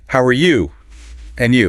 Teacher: when Americans say and you in a casual greeting they usually use a rising intonation